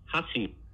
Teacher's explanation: There's a three-syllable, or in Japanese, this will be a three-mora sequence where you can get, say, high, low, low